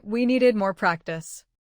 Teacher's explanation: Need ends with D, the special trigger. The past form adds the ID syllable, needed. Say, we needed more practice.